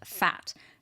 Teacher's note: the repetition of that labiodental fricative, fat. That's a f sound.